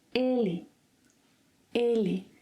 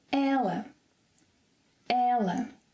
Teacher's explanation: Both of them have the stress in the second syllable to the last. However, the first one is closed, ele, ele, and the second one, ela, ela.